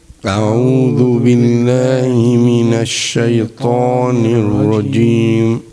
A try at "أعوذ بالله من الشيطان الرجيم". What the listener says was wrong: Rajim, Ra. Let's try to make the fatha that is on Ra clear. Not Rajim, but Rajim. أعوذ بالله من الشيطان الرجيم.